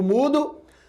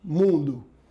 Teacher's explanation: a letra U que vai grafar o fonema oral u eu digo mudo fonema nasal que eu digo mundo